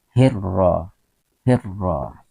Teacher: Adapun ro di sini dibaca tebal atau tafkhim, ya, tafkhim, tebal, ro, hirra, hirra, ya, tidak boleh dibaca ra, itu bacaan salah atau keliru.